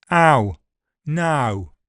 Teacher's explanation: It's open front in Cockney.